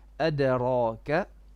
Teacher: Dal qalqala, no hams.